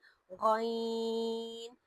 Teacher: جیسے پہلی صفت جو اس حرف میں پائی جاتی ہے وہ صفت حمز ہے، یعنی کہ غین ہوا کے ساتھ نکلتا ہے، اور اس میں صفت رخاوت ہے، یعنی یہ نرمی کے ساتھ ادا ہوتا ہے، اس میں اتنی کوئی سختی نہیں ہوتی، اسے ہم جھٹکا وغیرہ دے کر نہیں پڑھتے، بلکہ ہم آسانی سے ادا کرتے ہیں غین۔